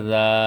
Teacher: الف مدہ ایک الف کے برابر لمبا ہوگا. الف سے پہلے زبر الف مدہ اس کو کہتے ہیں.